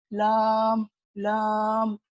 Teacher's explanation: जबान के किनारे को सनाया, रुबाइयात, अनियात और जवाहिद के मसोड़ों से लगा रहा हूँ। सनाया, रुबाइयात, अनियात, जवाहिद ये हमारे ऊपर के कुछ इस तरह दांत है जो कि यहाँ पे आप देख सकते हो।